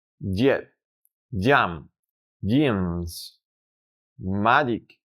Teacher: Para lograr reproducirlo, simplemente céntrate en pronunciar el sonido resultante de la lectura DJ en español en una sola emisión